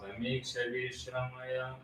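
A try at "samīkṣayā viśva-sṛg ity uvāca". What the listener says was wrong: wait, you're leaving out a syllable.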